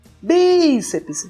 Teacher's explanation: O bi é a tônica. A gente permanece maior tempo aqui.